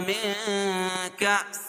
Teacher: میں اخفا حقیقی کیونکہ نون ساکن کے بعد حروف اخفا کی 15 حرفوں میں سے کاف ہے تو یہاں ناک میں آواز کو چھپا کر پڑھیں